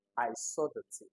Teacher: the emphasis of this sentence is on the seeing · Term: emphasis stress